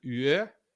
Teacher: And then this only exists in French and Occitan, the yeah. This is like a yeah, like an English Y sound, except you round your lips.